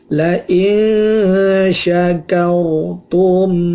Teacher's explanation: ada ro mati dibaca tafkhim